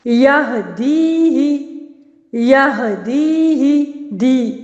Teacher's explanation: یا مدہ سے پہلے زیر آ رہی ہے اور اس کو میں ایک الف کی مقدار کے برابر کھینچ رہی ہوں